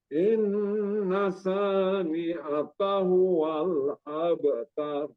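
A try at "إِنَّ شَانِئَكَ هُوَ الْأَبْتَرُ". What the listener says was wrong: Inna syanya lebih kurang lagi sya. Inna syani'aka huwal abtar.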